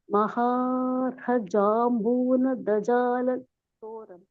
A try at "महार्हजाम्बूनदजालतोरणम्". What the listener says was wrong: Correct. One more time.